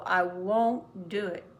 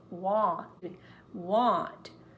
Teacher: want is more open